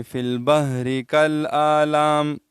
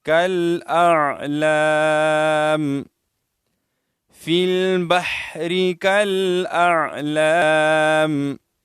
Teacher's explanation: ہا کو بھی اچھی طریقے سے ادا نہیں کرتے ہیں اور عین کو بھی اچھی طریقے سے ادا نہیں کرتے ہیں، حمزہ جیسا ادا کرتے ہیں. کل اعلام پڑھتے ہیں تو یہ عین ہے، عین اپنے مخرج سے صحیح طریقے سے ادا کرنا چاہیے.